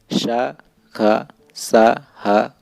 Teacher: श, ख, सा, ह को ऊष्म व्यंजन कहते हैं, क्योंकि इनके उच्चारण में घर्षण से उत्पन्न वायु का निष्कासन होता है